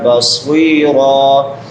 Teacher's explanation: صاد سیٹی والے حروف میں سے بھی اور مستعلیہ میں سے بھی، موٹے حروف میں سے بھی ، اور آخر پہ صاد کے بعد یائے مدہ ہے، یا